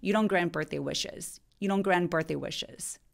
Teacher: N 발음할 때와 T 발음할 때 혀의 위치가 거의 같아요. 그래서 T 발음이 무성음이라서 바람 소리만 내니까 성대의 울림이 없는 무성음이라서 그래서 N 소리가 T를 잡아 먹습니다. 그래서 T 소리 안 내는 거예요.